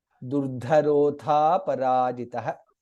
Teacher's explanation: था इज महाप्राण एंड दीर्घ